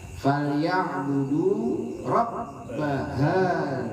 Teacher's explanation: dalnya gigit, dal tipis, bukan hazal apalagi hajal ya